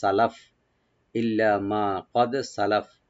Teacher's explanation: মানে ইল্লা মা কাদ সালাফা, যখন আমরা এখানে ওয়াকফ করব তাহলে ফা সাকিন হয়ে যাবে